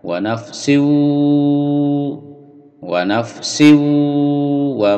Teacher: lalu sin bertemu wawu dimasukkan ke wawu dengung, ditahan